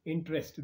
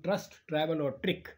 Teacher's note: the e is not pronounced t and r are pronounced as one t r like in trust travel or trick that is the